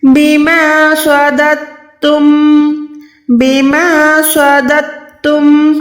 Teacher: تا کو پیچھے والے دال زبر کے ساتھ ملانا ہے، نہ کہ دال ساکن کے ساتھ